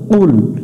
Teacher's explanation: করি এখানে পড়ি কুল কুল পড়া যাবে না কুল এটা একটু গলার ভেতর থেকে জিহ্বার গোড়া থেকে একটু মোটা করে নিতে হবে